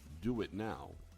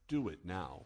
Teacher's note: we use the linking W to connect the vowel sounds o u and ow together